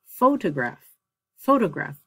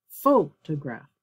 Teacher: The stress is on the first syllable.